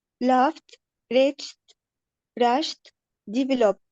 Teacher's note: Now try to say B, absolutely there will be vibration, and because there is vibration B is voiced and P is voiceless. Because P is voiceless, absolutely I have to delete the E sound and immediately I have to replace the D with T.